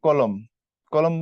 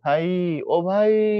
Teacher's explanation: তারপরে ধরো আমি বললাম হচ্ছে কলম, কলম বললে মতে গিয়ে আটকে যাচ্ছি, মধ্বনি পরে লম্বা হচ্ছে না। কিন্তু তুমি যদি এখানে বলো ভাই, ভাই বললে ই লম্বা হয়, ভাই, ও ভাই, লম্বা হচ্ছে, শেষের ধ্বনি লম্বা হচ্ছে। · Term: বদ্যাক্ষর